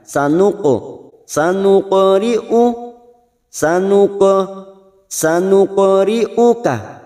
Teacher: huruf q sukun yang mati asli di tengah kalimat namanya qalqala sugro jangan lupa dipantulkan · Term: qalqalah sugro